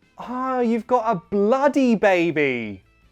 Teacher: The only real rule with word stress is you cannot sound happy when you only stress the word bloody